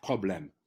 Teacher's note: the P of problem is a strong consonants in French it's not exploded like in English